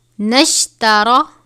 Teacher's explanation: را کو پر پڑھیں گے، را کے اوپر زبر ہے